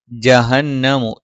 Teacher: ജ നാവിന്റെ മധ്യഭാഗം മേലെ അണ്ണാക്കിലാണ്.